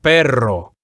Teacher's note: Whenever we have two R's together, you have to roll the R's stronger than when you have only one R.